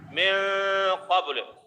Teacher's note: نون ہے اس کو ظاہر نہیں کر رہے ہیں، اس میں اظہار نہیں کر رہے ہیں، بلکہ اس کو چھپا رہے ہیں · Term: اخفا